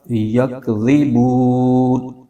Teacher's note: اور آگے نون پر زبر ہے، اور آگے آیت ختم ہو رہی ہے، تو یہاں پر وقف کریں گے۔ تو وقف کرنے کی صورت میں جو زبر کی حرکت ہے وہ ختم ہو جائے گی، اور نون جو ہے وہ ساکن ہو جائے گا، تو یہ بن جائے گا یکذبون۔